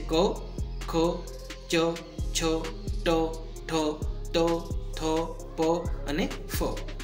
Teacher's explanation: હવે વાત કરીએ અઘોષની, કે નાદતંત્રી અલ્પ માત્રામાં કંપન થાય અને જે ધ્વનિ ઉત્પન્ન થાય તેને અઘોષ વ્યંજન કહે છે